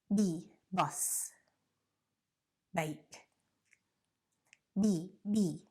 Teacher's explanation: cords this is the only difference okay it's the exact same you close your mouth you push the air but you use your vocal cords and when you open your mouth there's no air